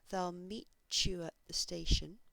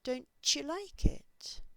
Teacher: at all of these word boundaries the t y join together to make a CH sound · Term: assimilation